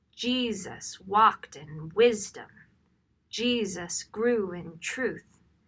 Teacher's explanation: The bolded syllables are where the stress falls when you are reading the text out loud, not necessarily when you are singing the text. The rhythm of this text is stressed, unstressed, stressed, unstressed.